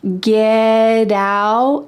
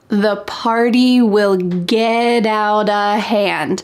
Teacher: that T is surrounded by vowels, and that means that it's going to change to a D sound.